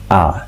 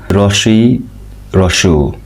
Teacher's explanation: যে স্বরধ্বনি উচ্চারণে ঠোঁট বেশি খোলে তাকে হচ্ছে বিবৃত স্বরধ্বনি বলে। বিবৃত স্বরধ্বনি উচ্চারণের সময় ঠোঁট সবচেয়ে বেশি খোলে